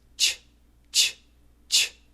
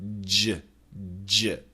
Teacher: So the CH has no vibration, ch, ch. The G has vibration, j, j.